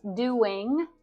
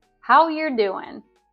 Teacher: I didn't pronounce doing but often we'll shorten ing endings to n